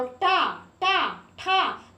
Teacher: तो आपकी जीभ जो है ताल के ऊपर वाले भाग को स्पर्श करती है। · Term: मूर्धा, मूर्धन्य